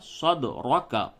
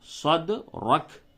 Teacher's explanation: حالت وقف میں کاف کے زبر کو ہٹا دیں گے، کاف ساکن ہو جائے گا، تو صد رک پڑھیں گے۔